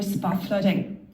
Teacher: Notice that the T, when it's beside another consonant, very often disappears, especially in an Irish dialect.